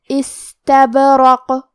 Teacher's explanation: استبرق، حرف البا پہ جزم ہے تو کیونکہ با حروف القلقلہ میں سے ہے تو ہمیں یہ حرف کو ہلاتے ہوئے یہ کلمہ کو پڑھنا ہے